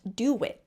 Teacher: Do it is usually pronounced do it with a W. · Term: vowel-to-vowel linking